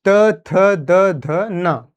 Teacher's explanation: जो हमारा दोनों दांत है ऊपर वाले दांत नीचे वाले दांत में जुबान हमारी टच कर रही थोड़ी सी स्पर्श कर रही है यहीं से उच्चारण हो रहा है